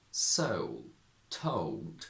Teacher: it's the combination of the diphthong O and the dark L